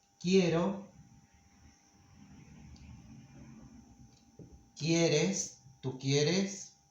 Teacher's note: when we conjugate them, this E becomes ye, the diphthong ye, in stressed syllables